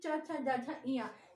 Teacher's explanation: आपकी जीवा कहाँ पर स्पर्श कर रही है? तालु पर। तालु यानी जीवा का वो भाग जो मूर्धा से थोड़ा पीछे की ओर होता है, कहते हैं तलवा जिसे बोलते हैं हम अपनी व्यवहारिक भाषा में, वही स्थान है तालु। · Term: तालव्य